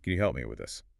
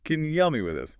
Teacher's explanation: Can you often reduces to kanya. The vowel in you becomes a weak schwa sound. And help me links together smoothly, sometimes sounding almost like helmy.